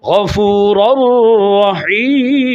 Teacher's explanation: لیوم لا ریب، تنوین کا نون داخل ہوا لام میں، غفور الرحیم، تو یہاں تنوین کا نون داخل ہوا را میں تو اب ادھر ہو گیا ادغام بلا غنہ اس لائن کے اندر۔